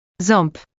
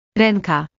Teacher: you need to direct some airflow through your nose simultaneously. Try holding your nose gently while attempting the sound. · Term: nasal vowels